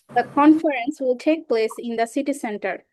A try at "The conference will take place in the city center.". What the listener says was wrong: Wow, very nice. Okay, you said it really nicely.